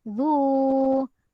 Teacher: Zu dibaca panjang, 2 harokat. Okey, mad asli waw.